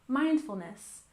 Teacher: mindfulness we stress the first syllable